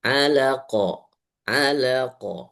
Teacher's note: Suaranya, pantulannya agak besar, nggak masalah. Karena itu qalqalahnya kubro.